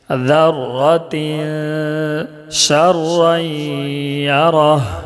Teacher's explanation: इसमें इख्फ़ा होगा, इसलिए कि तनवीन के बाद हुरूफ इख्फ़ा के 15 हुरूफ में से शीन है। ज़र्रतिन शर्रन यरह, शीन रा ज़बर शर, रा या दो ज़बर रई, इदगाम नाक़िस गुन्ना के साथ पढ़ेंगे।